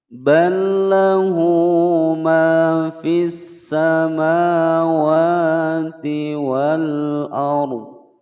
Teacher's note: Ini adalah hukum bacaan idgham mutamassilain. Cara membacanya yaitu langsung dimasukkan tanpa didengungkan